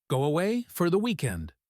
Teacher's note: The Y in away and for blend.